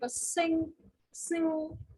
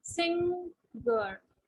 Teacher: when we pronounce this word, sing, sing, you can see the tongue is going back.